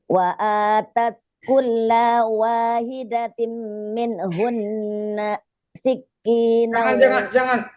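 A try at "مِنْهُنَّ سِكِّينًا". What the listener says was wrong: Jangan dibatasin, jangan ada jeda. Min hunna sik, jangan langsung aja. Wa atat kulla wahidatim min hunna sikina.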